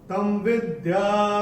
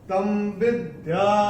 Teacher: ये त के ऊपर जो अनुस्वार आ रहा है, इसके बाद का अक्षर है व, और अनुस्वार के बाद जब व आएगा तो अनुस्वार का उच्चारण होगा म